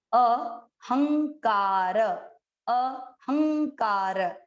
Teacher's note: ये जो बिंदी है जिसे हम अनुनासिक कहते हैं, जो नाक से न का उच्चारण करता है, आधा न ये उच्चारण करेगा।